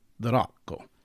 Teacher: Ideally, you'd trill the R a little bit and say Dorocco